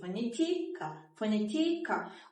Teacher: Əgər düşünürüzsə i hecasındadır. Bu zaman i hecasını daha vurğulu şəkildə deyirik.